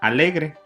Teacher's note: es también grave y llana y lleva el énfasis en la penúltima sílaba